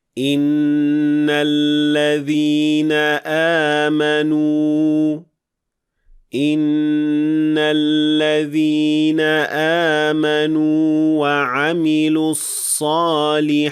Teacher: you will extend the waw for 2 counts as a natural mad letter